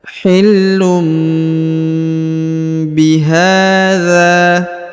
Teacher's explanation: Huruf la-nya juga ditahan dan ditekan karena di sini ada tanda tasdid ya.